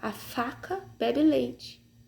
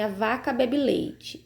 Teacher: o F é uma consoante surda e o V é uma sonora, que a pronúncia é diferente